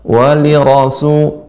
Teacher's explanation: Kemudian pada kata walira, ini memang kita harus lebih fokus. Li kasrah, ra-nya fathah, maka ra tetap tebal. Walirasu, ra-nya tebal.